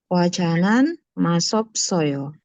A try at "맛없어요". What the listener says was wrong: Ini cara bacanya madopsoyo. Jadi S-nya dibaca seperti D. Madopsoyo. Madopsoyo. Itu emang ada pengecualian ya, 여러분. Jadi bukan masopsoyo tapi madopsoyo.